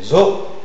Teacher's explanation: C'est une consonne orale, fricative, Alvéolaire, et sonore.